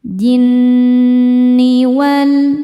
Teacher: Nun tasdidnya dihukumi ghunah musyaddadah karena nun bertasydid. Cara membacanya berdengung. Dengungannya tahan kurang lebih dua harakat. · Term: gunnah musyaddadah